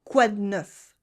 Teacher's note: We cut the E in de, and it becomes quoi de neuf?